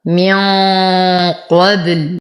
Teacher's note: نفخم القاف، نرقق الباء، نقف على اللام بالسكون العارض. قبل، ولو وصلنا لكانت اللام مضمومة فنتم ضمتها. · لدينا نون ساكنة وبعدها القاف في كلمتين فالحكم إخفاء حقيقي مع غنة كاملة مفخمة